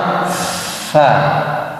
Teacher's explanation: Seperti misalkan huruf fa. Fa sifatnya apa? Mengalir nafasnya.